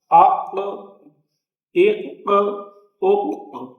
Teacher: قاف ہے یہ پر بھی پڑھا جائے گا اور اس پہ قلقلہ بھی ہوگا